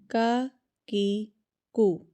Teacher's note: کا میرا سخت تالو کے ساتھ میری زبان نا سخت تالو کے ساتھ لگ رہی ہے اوپر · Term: کاف